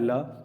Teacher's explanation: पार्श्व का मतलब होता है बगल से हवा निकलती है, इसको पार्श्विक बोलते हैं। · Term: पार्श्विक व्यंजन